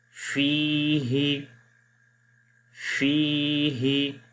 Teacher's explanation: اب یہاں پر یا مدہ ہے، یا کے اوپر جزم ہے اور اس سے پہلے زیر ہے تو ایک الف کے برابر لمبا کرتے ہیں، یعنی کہ 2 سیکنڈز. فی ہی، فی ہی.